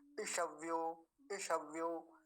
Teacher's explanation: ये ह्रस्व इकार है, बड़ी ई नहीं है, तो लंबा नहीं खींचेंगे कभी, ऐसा बना दे ईशव्यो, ऐसा नहीं, ईशव्यो, ईशव्यो।